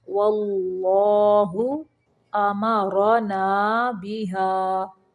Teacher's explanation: اللہ کا لام موٹا پڑھنا ہے